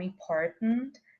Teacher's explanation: na palavra important, essa alveolar ela pode ser substituída pela oclusiva glotal, sendo produzida como important, sem que haja mudança de significado.